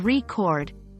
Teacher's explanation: a noun like a musical recording but when pronounced as record with the stress on the second syllable it refers to the verb meaning to capture sounds or images